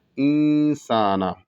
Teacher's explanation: سین پتلا ادا ہوگا اور سین کے بعد الف ہے تو ایک الف کے برابر کھینچا جائے گا